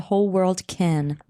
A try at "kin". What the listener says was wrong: Kin? It sounded like Ken. Well, because the way you say Ken is kind of like kin with your southern accent. Ken. Kin.